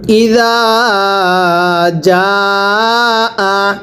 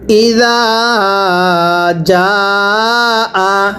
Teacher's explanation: জিম আলিফ জবর যা, এই জিমের মধ্যে 4 আলিফ টান, জালের মধ্যে 1 আলিফ টান